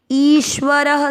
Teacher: इसके बाद आदर्श शंकर जी वाला और व पूरा ईश्वर, व और र दोनों अक्षर पूरे हैं। ईश्वर, र में अ की मात्रा तो विसर्ग को पढ़ना है ह